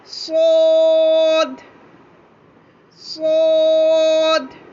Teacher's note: सोद को हमने मोटा अदा किया और इसमें देखिएगा, इसमें भी सीटी की आवाज़ लाजमी चाहिए